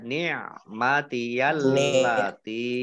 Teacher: lamnya dibaca double, ada tasdidnya, ya. Tak kasroh, ya sukun, mat tobi'i, tetapi karena bertemu dengan huruf alif di kata yang berbeda, maka menjadi mat jaiz munfasil.